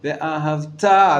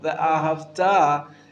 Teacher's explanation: The emphasis is on the last syllable.